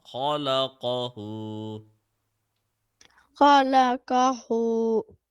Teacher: Stretch the who for 1 second.